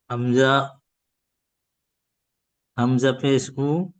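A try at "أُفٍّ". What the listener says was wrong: হামজা পেশ হবে কেন? ফার উপর তাসদিদ রয়েছে তো।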